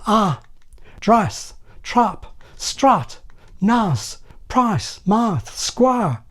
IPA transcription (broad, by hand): ɐ -- drɐs, trɐp, strɐt, nɐs, prɐs, mɐθ, skwɐ